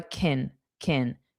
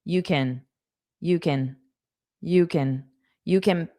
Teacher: So can is a modal verb. It's not the main verb. Because of that, it's unstressed and is more of a kin kin.